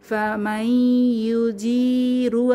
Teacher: নুন সাকিনের পরে ইয়া এসেছে, তাহলে ঈদগম ঈদগুন্নাহ।